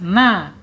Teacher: alisannya ada di ujung lidah. Menyentuh langit-langit yang depan ya. Ee hampir berdekatan dengan pangkal gigi seri atas. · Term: nun